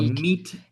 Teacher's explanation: meet is a monophthong. It's just one